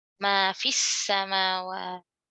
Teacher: lam diasimilasi. Lam tidak dibaca.